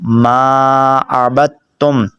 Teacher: با کو تا کے ساتھ ملانا ہے